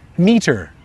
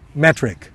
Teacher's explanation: listen to the contrast between the long e and the short e